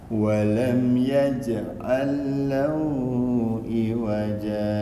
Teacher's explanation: Itu jimnya jim Indonesia, karena di ujung lidah dia.